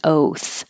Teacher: The TH is hard to hear because it's voiceless, so it could sound like singular oat because you won't hear the T.